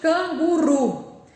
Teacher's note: É o ru. Se é na minha última sílaba o tom mais forte, então a vogal final que eu utilizo é o u.